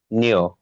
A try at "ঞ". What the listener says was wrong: নিও না, ঞ ঞ ঞ। ন উচ্চারণ হবে না, অর্থাৎ ন নাসাল নেসাল সাউন্ড হবে না, এটা মূর্ধতে উচ্চারিত হয়। বিশেষ করে আপনার, আমি এটার এটার স্থানটা একটু দেখিয়ে দিচ্ছি আবার। এটা কোথায় উচ্চারিত হচ্ছে আপনারা আবার দেখেন, সমস্যা নেই।